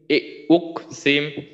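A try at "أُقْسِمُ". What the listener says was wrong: আচ্ছা, মিমে কিন্তু জজম না। উকল সিমু, কলকলাটা কিন্তু একটু কম হয়ে গেল। উকল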